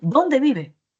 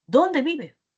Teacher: la mayor fuerza de voz está en ese pronombre interrogativo y luego tiene que caer